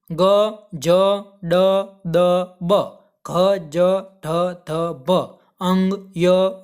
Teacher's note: આ બધા વ્યંજનો જ્યારે જ્યારે તમે એનું ઉચ્ચારણ કરશો ત્યારે તમારી નાદતંત્રી કે ગળા ઉપર તમે હાથ રાખશો તો તમને ધ્રુજારીનો અનુભવ થશે અને આ વ્યંજનોનો ઉચ્ચાર કરશો એટલે એનો અવાજ તમારો કોમળ નીકળશે, એટલા માટે આને ઘોષ વ્યંજન કહે છે।